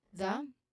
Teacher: the version of th sound here is vibrated so it's voiced the and then the stress is on the word corner corner